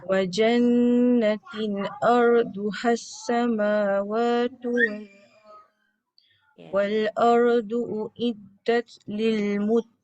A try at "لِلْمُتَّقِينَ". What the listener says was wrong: Jaga kaf ke qaf? Jangan muttaqin. Muttaqin jadi kaf. Uiddat lil muttaqin. Mesti bunyi tempat qaf. Itu pun tadi dekat uid tu jangan uid.